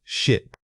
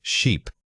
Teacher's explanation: The sheer difference between these two words comes down entirely to that single vowel sound. If you hear a short, quick burst of air, it's ship. If you hear a sustained, stretched sound, it must be sheep. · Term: length of the vowel